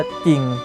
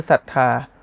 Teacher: ไม่ออกเสียงควบกันและจะออกเสียงเฉพาะตัวหน้าเท่านั้น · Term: ควบกล้ำไม่แท้